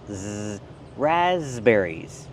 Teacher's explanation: The s makes a z sound like in zebra with a voice.